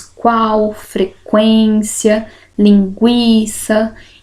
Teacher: outra subclassificação eu tenho o crescente que o som vai crescer Então eu tenho primeiro uma semivogal e depois uma vogal